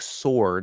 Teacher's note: words like sword which has a silent w silent W important sword it's or but the W is silent